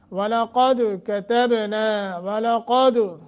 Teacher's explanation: قاف کو موٹا اور دال پہ قلقلہ ہے، کتبنا، کتبنا، با ساکن ہے، قلقلہ کر کے پڑھیں گے۔